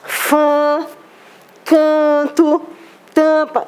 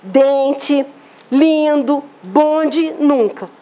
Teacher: Então, pessoal, por que são nasais? Para serem emitidas, eu preciso da minha cavidade nasal, então eu faço aquele sonzinho nasalizado.